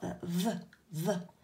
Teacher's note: my tongue is sticking out between my teeth when i say that